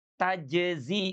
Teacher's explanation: huruf jim dengan huruf zai ini tidak dibaca idgham gitu sebetulnya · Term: mutabaidain